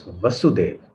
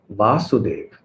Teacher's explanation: when you make the first short vowel as a long vowel, then that indicates the son or the descendant, or maybe the daughter, depending on how you end that word.